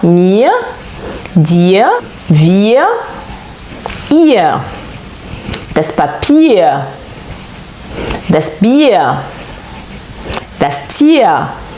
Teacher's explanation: un petit A prononcé à la fin